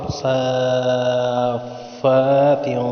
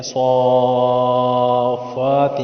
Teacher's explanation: صاد پہ بڑا مد ہے، چار الف کی مقدار کھینچتے ہیں،